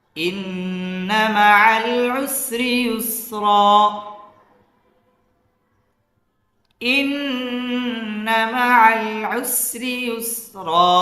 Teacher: ইন্না মাআল উসরি রটা বারিক হবে, ইউসরা এই রটা পুর হবে